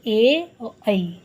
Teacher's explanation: कंठ जिसका उच्चारण स्थान कंठ और तालु दोनों हो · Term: कंठ तालु